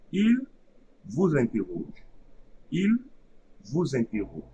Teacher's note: So I won't create the abstract the liaison between the S and I only, because IN is a syllable. So we are going to create the liaison between the abstract Z and the first syllable of the second word.